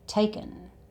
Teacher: the 'ing' sound in 'taking' has changed to the 'uhn' sound again. "Takin'" And it actually sounds like the word 'taken'.